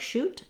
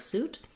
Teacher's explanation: whereas sh had my tongue further back and a lot of air can come out, the s sound is very narrow and constricted